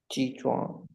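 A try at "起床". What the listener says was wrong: नो ची चुआंग, ची चुआंग 10 बार बोलिए, ची चुआंग। ची छुआंग, छ छ होता है, चुआंग नहीं होता है। छ च एंड छ का डिफरेंस होता है ना हिंदी में। छ, ची छुआंग।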